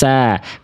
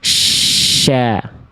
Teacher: Kalau syin menyebar udara. Kalau siny berdesis. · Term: Tafasyi